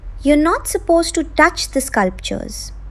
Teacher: In the first one, to is said quickly with a soft schwa sound since a word follows it. In the second, since nothing comes after it, to gets pronounced fully. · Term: weak to